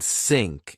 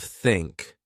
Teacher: Then I learned that to make the sound I needed to relax. I put my tongue gently between my teeth. I blew air.